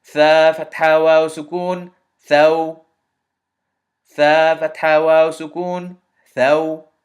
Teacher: That aw sound at the end, that slight bit of o, that elongation is known as the leen elongation or the soft elongation.